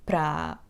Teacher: we will just prolong the ending ah in the preposition